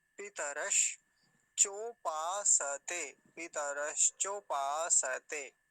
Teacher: देखिए तालव्य शकार है, आधा है तो आधा ही बोलेंगे, मतलब वहीं रुक जाएंगे। पितरश चोपासते, पितरश चोपासते, ऐसा हो जाएगा।